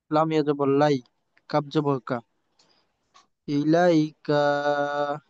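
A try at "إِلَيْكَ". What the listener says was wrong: হুম, কা লম্বা করা যাবে না, ছোট কা। কাফ জবর কা। ইলাইকা।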